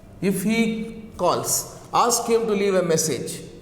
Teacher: The tone rises in the first clause and falls gradually in the second clause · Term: rising, falling intonation